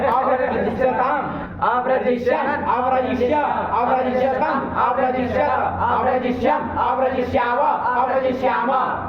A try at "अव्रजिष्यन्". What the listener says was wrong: विसर्ग लड़का नहीं बोलता, इसका गलत जाता है, आप लोग टोका करो इसको, विसर्ग नहीं बोलता सही से। अरे सिर्फ कसब तो विसर्ग होगा ना, तो गलत बोलता है वो।